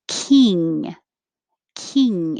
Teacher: King, king, and you just hold it there. And no air comes out your mouth. Air only comes through the nose.